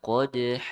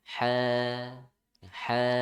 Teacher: jangan sampai ada hamzahnya di akhir, ya. Di suara saja di akhirnya.